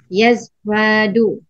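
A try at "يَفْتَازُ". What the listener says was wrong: Hurufnya tertukar lagi. Huruf fa dulu, Ibu.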